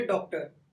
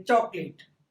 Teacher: ये आ और ओ दोनों के बीच का समझो कि ना तो इसका उच्चारण आ होता है ना ओ होता है, इसका उच्चारण होता है औ। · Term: आगत स्वर